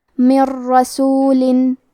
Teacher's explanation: کلمت من کے آخری میں نون ساکن ہے، پھر حرف الراء ہے کلمت رسول، راء حروف الادغام بغیر غنہ میں سے ہے تو ہم نون ساکن کو راء میں ملا کے بغیر غنہ سے لیکن تشدید کے ساتھ یہ حکم کو ادا کریں گے